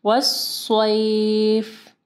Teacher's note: یا ساکن ہے، اس سے پہلے دیکھیں صاد کے اوپر زبر ہے، مدلین آ رہی ہے